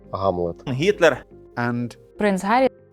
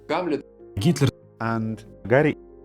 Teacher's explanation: Ukrainian has a sound somewhere between G and H